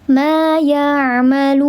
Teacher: Ada waw sukun sebelumnya harakatnya dhammah, maka di sini mad, namanya mad bertemu dengan huruf hidup, dan huruf hidup ini mati karena diwaqafkan. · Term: mad arid li sukun